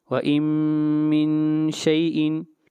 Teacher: اس مثال کے اندر بھی نون ساکن کے بعد میم آ رہا ہے، یہاں پر ادغام کریں گے غنہ کے ساتھ